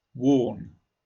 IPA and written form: wɔːn (worn)